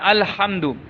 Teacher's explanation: الحمد، کیا لفظ ہے پہلا؟ ہا کو صحیح کرنا ہے، الحمد، ہا گلے کے درمیان سے